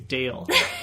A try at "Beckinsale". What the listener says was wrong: I don't think there's a D. Beckinsale.